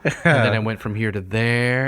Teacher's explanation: I want to do it kind of consistently with kind of like a Valley Girl uptalk